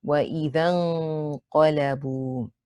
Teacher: So we have to use the dhal. We drop the first alif because we don't need it. We go straight from the dhal with fatha to the noon.